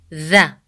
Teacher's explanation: when you say the sound of the you put the tip of the tongue between your teeth